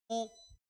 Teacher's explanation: होठ का आकार क्या हो रहा है हमारा, गोल हो रहा है हल्का सा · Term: वृत्तामुखी स्वर